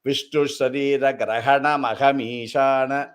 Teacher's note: you will not give a breath after Grahana.